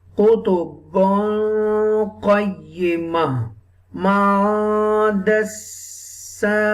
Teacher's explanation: We will hide the voice of noon into the nose for 2 seconds. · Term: ikhfa